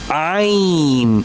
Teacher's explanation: From the middle portion of throat.